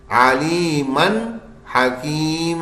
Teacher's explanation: बस नून सादा सादा बिल्कुल साफ पढ़ देना है गुन्ना होने नहीं देना ये हमने पढ़ा था इजहार के कायदे में चौथी हमारी नून